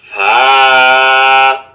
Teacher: নিচের ঠোঁটের পেট সামনের উপরের 2 দাঁতের আগার সঙ্গে লাগাইয়া ফা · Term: 14 নং মাখরাজ